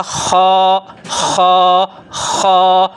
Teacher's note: یہ آپ کو میں بتا رہا ہوں، یہاں زبان نیچے ہے، یہاں زبان پیچھے سے اٹھی ہوئی ہے، تو حرف خا جو ہے یہ حروف مستعلیہ میں سے ہے، تو یہ پیچھے کی طرف سے زبان اوپر تالو کی طرف اٹھائیں گے